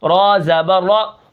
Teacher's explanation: را کو موٹا کروں گا کیونکہ را کے اوپر زبر ہے